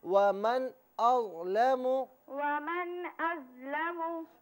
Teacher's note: ابھی آپ نے اظلمو کو میم کے اوپر جو پیش ہے اسے آپ نے کھینچ کر پڑھا، تو اسے بغیر کھینچے پڑھیں گے